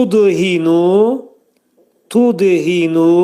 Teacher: Tudhinu tudhinu dəl hərfi burda qəlqələdir. Çünki sükunla gəldi.